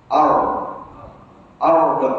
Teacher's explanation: Cara nak buat ra tebal, masa kita sebut ar tadi tu, lidah kita ke belakang sedikit.